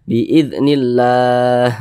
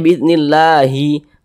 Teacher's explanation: Ini kita baca biidznillah, jangan dibaca biiznillahi. Kalau kita berhenti tepat di huruf H-nya kita sukunkan.